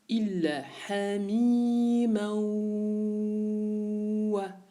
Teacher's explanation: Ici, nous avons un son nasal, donc qui se produit de tanwin vers le waw. Le tanwin qui rencontre le waw nous impose une règle.